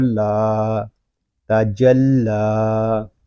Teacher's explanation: لام کو ہم ایک الف تک کھینچ کر پڑھیں گے کیونکہ یہاں کھڑا زبر ہے